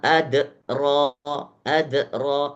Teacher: jadi qalqalahnya kubro bukan sughro. Kenapa? Karena pantulannya terlalu besar. Wama adro adro itu terlalu besar.